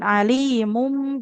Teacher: Mengubah bunyi nun sukun menjadi mim sukun. Alimum. Jadi dibacanya alimum bil mufsidi itu namanya iqlab. · apabila tanwin damah atau nun sukun bertemu dengan huruf ba saja maka di situ ada bunyi mim sukunnya ya. Mengubah bunyi nun sukun menjadi mim sukun.